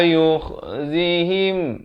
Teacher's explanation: Kha ni makhrajnya di hujung kerongkong.